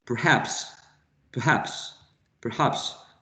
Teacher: the stressed syllable in perhaps is the second syllable